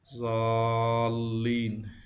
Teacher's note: تھوڑا سا توقف کرنے میں ہے، ضالین، لہذا ضروری ہے کہ الف کو تھوڑا سا کھینچ کر پڑھیں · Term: مد